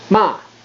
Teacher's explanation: means to insult somebody um would be the fourth tone and the fourth tone is a sharp downward Spike you're starting at the top of your pitch and going down